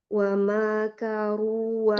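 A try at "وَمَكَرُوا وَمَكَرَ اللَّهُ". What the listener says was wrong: Emaknya pendek. Ulangi.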